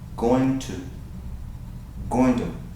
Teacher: It sounds like that, and many English-speaking people say it that way. Gonna, and they skip that T sound, and they skip the ing sound